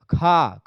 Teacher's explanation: खा खा बोलेंगे तो ज़्यादा हवा निकल रही तो महाप्राण हो जाएगा